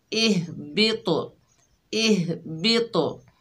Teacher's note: हा की आवाज़ इसके मखरज में रुक जाएगी लेकिन तो की आवाज़ पलटकर वापस आएगी, क्योंकि तो हरूफ कलकला में से है।